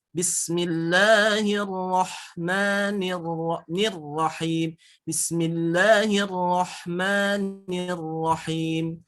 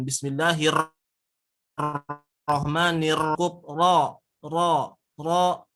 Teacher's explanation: huruf ro itu dalam cara pengucapannya itu tidak boleh getarannya lebih dari tiga getaran